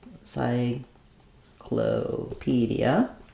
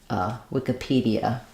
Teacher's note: They're both stressed on the P of pedia.